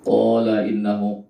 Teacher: qa itu dipanjangkan 2 harokat, itu mad tabi'i. Qala innahu, innanya itu dibaca gunnah, dengung ya.